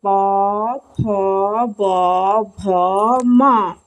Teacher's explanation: ओष्ठ व्यंजन उसे कहते हैं जिसे ओंठों के द्वारा बोली जाए